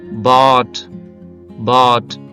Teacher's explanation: నోరు పూర్తిగా ఓపెన్ అయింది కాబట్టి దీన్ని మనం ఓపెన్ ఓవెల్ గా చెప్పొచ్చు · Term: ఓపెన్ బ్యాక్ ఓవెల్ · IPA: ɑː